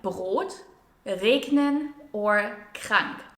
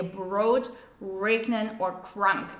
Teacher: the German R is pronounced here in the back of your throat we also call this the gargling r or consonantal R sound